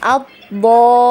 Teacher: Kemudian huruf lamnya ini diberi kaidah naber ya, dinaber ya. Karena ada kaidah naber, di situ ada tasdid setelah mat, maka dia dinaber ya, ditinggikan suara.